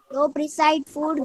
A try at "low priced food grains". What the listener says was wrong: લો પ્રિસાઇઝ નહીં લો પ્રાઇસ્ડ.